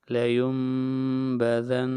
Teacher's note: با آئے گی تو اس نون ساکن کو میم میں بدل دیں گے